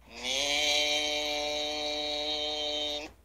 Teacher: এই হরফটি বলতে উভয় ঠোঁট মিলিয়া শুরু হবে, উভয় ঠোঁট মিলিয়া শেষ হবে। 4 আলিফ পরিমাণ লম্বা হবে, ওই সময়টা মুখ খুলে থাকবে।